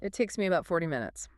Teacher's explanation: You want to put the emphasis on the verb takes and the number 40. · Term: sentence stress